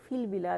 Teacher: فی البلاد, فی البلاد ہے ایکچولی یہ, تو فی میں آپ دیکھیں گے فی البلاد ہم روانی میں جب پڑھ رہے ہیں یہاں بھی ہم نے حرف مدہ یا ڈراپ کر دیا